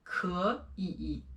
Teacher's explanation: So for this one, 可以, it is actually 可以. The first one is sounded like the second tone